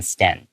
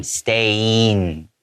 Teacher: 一个技巧是想象这个a后面有个e的声音